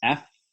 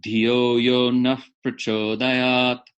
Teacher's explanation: it's an F with lips and lips, only lips. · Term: bilabial fricative